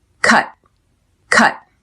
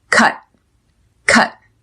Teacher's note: Notice how I don't pronounce the T at the end. I press air out of my mouth and stop. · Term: stop T